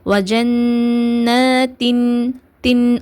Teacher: இல்ஹார்னால் நம்ம நூனை நல்லா வெளிப்படுத்தி ஓதணும், நல்லா கிளியராக ஓதணும் நூனை. அதனால் வஜன்ன தின் தின் அந்த இன் சவுண்ட் நமக்கு நல்லா கிளியராக இருக்கணும். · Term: இல்ஹாரோடைய சட்டம்